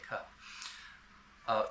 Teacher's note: It doesn't have that aspiration because English speakers, we don't say the K after an S. It's a soft K, K. So it sounds kind of like a G. It's without aspiration, kind of like a G.